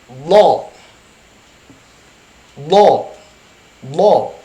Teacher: tidak ada gerakan bibir ke depan